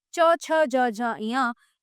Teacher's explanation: ये तालु से बोले जाते हैं